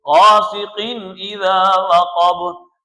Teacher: غاسقین اذا وقب، اور تنوین کے اوپر غنہ بھی نہیں کریں گے، غاسقین اذا وقب، یہ جو ہم قین کر رہے ہیں، یہ غنے کی آواز پیدا کر رہے ہیں، یہ غلط ہے اور یہ غلطی ہے۔ غاسقین ظاہر کرنے کا مطلب یہ ہے کہ صرف تنوین ادا کرنی ہے اور کوئی کام نہیں کرنا